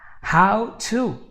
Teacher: How to, this T becomes an R again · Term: flap T